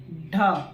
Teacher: ड कहां पे जीभ सटा, ऊपर में, ढ देखो ऊपर में कुछ देरी के लिए सटता है, फिर हट जाता है, यानी एक झटके से सटेगा फिर हट जाएगा।